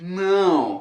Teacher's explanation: the nasal vowel which doesn't exist in Spanish or in English